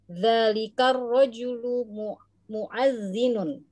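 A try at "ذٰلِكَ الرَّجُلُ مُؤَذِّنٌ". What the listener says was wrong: Aywa, muadzinun. Ini hamzah bukan ain ya, bukan muadzinun.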